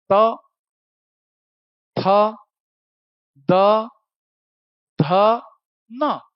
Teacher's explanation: पांचों बार आपकी जीभ दांत को टच करेंगे। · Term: दंतव्य